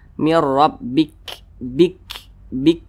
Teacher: Nah, kemudian huruf kaf ini kalau dia sukun, cara membunyikannya itu ada aliran udara yang keluar daripada mulut kita.